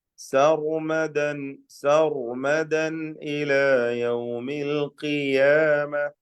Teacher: റായിന് നല്ല തഫ്ഖീം കൊടുക്കുക, തടിപ്പിച്ച് പറയാം. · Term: തടിച്ച റാ